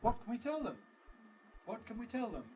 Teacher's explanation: We've got unweakenable what and tell, but everything else is weakened. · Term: weak form